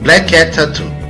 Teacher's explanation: Ouve-se o som K apenas uma vez entre as palavras black, cat. Tampouco é pronunciado duas vezes o som T, ao final de cat e o início de tattoo.